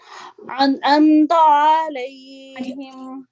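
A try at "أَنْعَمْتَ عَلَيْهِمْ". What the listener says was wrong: آئین بھی 1 سیکنڈ کے لیے لمبا کریں گے بس اس کی آواز کو. آئین کی آواز نکالتے وقت وہ محسوس ہوا جیسے تھوڑی سی آئین لمبا ہو گیا.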